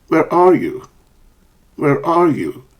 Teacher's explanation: Do you notice a falling intonation at the end of the sentences?